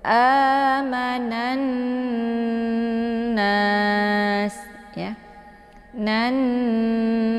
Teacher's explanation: Cara membaca na ini adalah dengan menekannya sambil menahan bunyinya sehingga menghasilkan suara dengung. · Jadi ketika sebuah nun sukun bertemu dengan nun yang mengandung vokal, nun pertama ( sukun) digabungkan ke dalam nun kedua ( vokal). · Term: alif lam syamsiyah